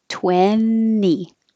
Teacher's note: So don't say the T, 20.